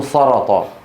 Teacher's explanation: لكن بعض العرب يفخمونها بيقولون سرط